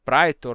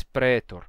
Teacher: Ele está representando a pronúncia rústica, o sotaque rústico, o sotaque do interior, em que não se dizia caecilius nem praetor, e sim caecilius e pretor, certo? Era um sotaque em que a gente já tinha essa pronúncia monotongada, não mais o ditongo I, mas sim um simples E.